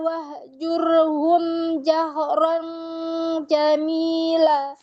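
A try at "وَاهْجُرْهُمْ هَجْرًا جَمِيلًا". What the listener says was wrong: Hajiran jamila, bukan jahran. Hajiran bukan jahran. Hajiran. Hajiran, bukan jahran. Hajiran. iya, bukan jahran. Hajiran, bukan jahran.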